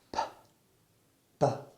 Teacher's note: I use my lips to stop the flow of air and then release it. P, B. The only difference is that the B is voiced and the P is aspirated. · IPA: /p/ and /b/